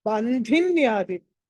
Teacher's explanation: ధా అన్నది మహాప్రాణం ఒత్తి పలకాలి, ఒత్తి పెట్టుకోండి